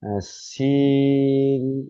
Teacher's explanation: 3 আলিফ টান দিয়ে পড়তে হয়